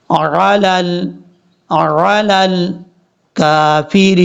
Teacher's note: لام کو لام سے ملائیں گے، بیچ میں حمزہ اور یا کو چھوڑ دیں گے